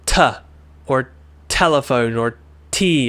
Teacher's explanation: Your tongue is pushing at the top of your roof of your mouth, right? the ceiling of your mouth where your gums are.